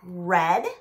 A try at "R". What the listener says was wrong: Now, don't stretch it out. Don't say R. That's not the sound.